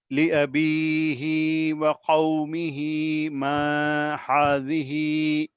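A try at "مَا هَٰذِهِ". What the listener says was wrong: हा बोल रहे हैं, हा बोल रहे हैं आप। नरमी वाला हा।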